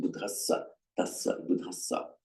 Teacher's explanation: In the genitive of Buddha in Sanskrit is buddhasya with a sya. And it's this sya that's become, by a regular phonetic mutation, merged into a double S